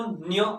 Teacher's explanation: या अनुनासिक वर्णांचा उच्चार करत असताना तो आपल्या नासिकेमार्फत करावा लागतो. आपल्या नाकावाटे त्याचा उच्चार करावा लागतो.